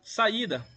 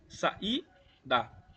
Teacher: Perceba que a entonação da palavra é bem no i, que a gente nessa nessa separação a gente fala que é um iato, que é quando duas vogais se separam.